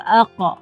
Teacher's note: Huruf qaf akan sentiasa ada qalqalah